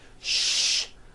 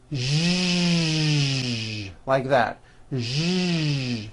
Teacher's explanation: first make a sh sound, and then you add voicing. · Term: voiced SH sound